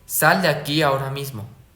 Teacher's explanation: sube, sube, luego baja, o sea, ascendente, ascendente y descendente. · Y también tenemos la entonación en oraciones exhortativas, o sea, mandatos, que se parecen a las exclamativas: subida inicial, fuerte y descenso